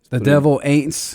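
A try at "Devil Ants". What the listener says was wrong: I think it's Aints. No, I think it's Ants. You said Aints.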